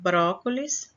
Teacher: a sílaba tônica no bro né na antepenúltima sílaba é uma palavra proparoxítona